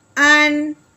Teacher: حمزہ نون زبر ان، یہاں کوئی غنہ نہیں ہوگا، اظہار کے ساتھ بغیر غننے کے پڑھیں گے